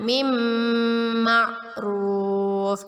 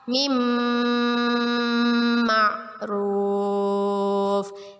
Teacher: Nun sukun bertemu dengan huruf mim, ya, idgham bi gunnah. Kita masukkan bacaan nun matinya kepada huruf mim dan kita dengungkan dan ditahan 2 harokat.